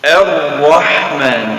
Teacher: Jadi Ar-Rahman sama juga, kita mulai dengan baris atas, dan di sini Ar-Rahman lamnya tidak sebut karena ini lam syamsiah